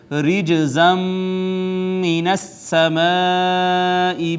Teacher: نون تنوین کا ادغام ہو گیا میم میں، ادغام بالغنہ ہے